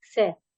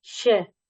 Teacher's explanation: श के उच्चारण में जीभ तालु को छूती है, स, श, जबकि स के उच्चारण में जीभ मसूड़े को छूती है।